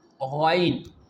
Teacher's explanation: here you can see during its pronunciation the sound is thick, heavy, and there is a rising of tongue in its pronunciation.